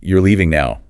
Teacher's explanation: The rising pitch on the word now is what turns that statement into a simple yes-no question. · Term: rising intonation